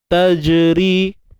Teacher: Ri nipis dan kita panjangkan 2 harakat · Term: Mat asli